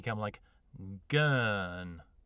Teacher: the soft uh sound like gun is going to be much rounder and more elongated